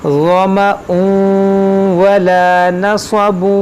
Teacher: یہاں پر ادغام کریں گے، تنوین کے بعد واو ہے. غما ولا نصب، یہاں پر بھی ادغام ہوگا.